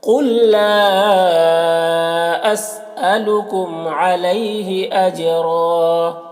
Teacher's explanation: اجرا جیم میں قلقلہ ہوگا، را کو پر پڑھیں گے یہاں پر، اور وقف کی صورت میں ایک زبر کے ساتھ الف پڑھیں گے · اسألکم میم میں یہاں پر اظہار شفوی ہو رہا ہے، اسے جلد پڑھنا.